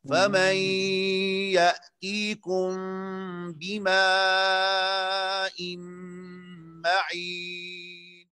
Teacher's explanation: اخفاء شفوی کو آپ نے اس طرح پڑھنا ہے کہ پہلے میم کو آپ نے نرمی کے ساتھ پڑھنا ہے. یأتیکم دونوں ہونٹوں کو نرمی کے ساتھ ملانا ہے، اور اس کے بعد با کو سختی کے ساتھ ادا کرنا ہے